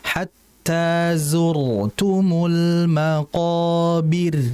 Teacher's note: Nah, maqobir rnya ini kan berarti mati ya, karena berhenti. Sebelumnya ada huruf ba, harakatnya kasrah. Maka kalau harakatnya kasrah sebelumnya, rnya jadi tipis.